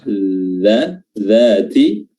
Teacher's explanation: Dza makhrajnya adalah ujung lidah diapit oleh gigi seri atas dan bawah